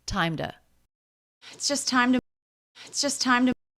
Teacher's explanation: so it's more like a d sound a flap sound in american english than a true t